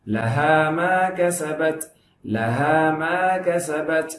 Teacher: கஸபத் இத் அப்படி சொல்லும்போது ஹம்ஸ் வரணும்